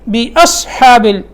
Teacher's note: صاد جو ہے یہ موٹا لفظ ہے، اس کے بعد ہا باریک ہے